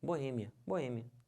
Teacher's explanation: a sílaba tônica é esse e que já tá até acentuado